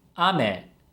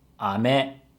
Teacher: So the difference is the pitch. Ame has a high-low pitch pattern, and ame has a low-high pitch pattern. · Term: pitch accent